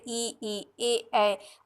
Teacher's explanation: जिनके उच्चारण में होठों की आकृति अवृत्ताकार होती है, जैसे ई, ए।